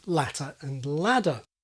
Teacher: the TD distinction can be lost through American flapping. So for example, ladder can mean both latter and ladder.